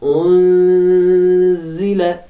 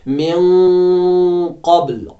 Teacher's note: اخفا یعنی مخفی طور رکھنا نون کو اور ناک میں سے تھوڑی آواز نکالنا